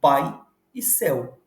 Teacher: primeiro eu começo com a vogal forte e sigo com a vogal fraca que é a semivogal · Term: ditongo decrescente